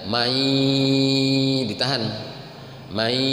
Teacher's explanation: Mai gunnah itu ditahan sama ke hidung, khayshum. Mai dikehidungkan suaranya. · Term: bi gunnah